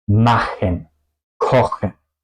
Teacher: Machen y kochen, yo pronuncio la CH como la J española, es decir que yo uso un poco también la campanilla y es decir que el sonido no solamente se pronuncia en la boca, se pronuncia también desde la garganta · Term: la CH alemana